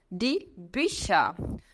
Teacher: esse U com dois pontinhos em cima eu falo com boca de U falando i